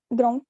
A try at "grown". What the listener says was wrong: It's not ground, it's grown. Grown.